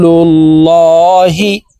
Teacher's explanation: আল্লাহ শব্দের আগের হরফে জবর অথবা পেশ হইলে এই লামকে ল অর্থাৎ মোটা করিয়া পড়িতে হয়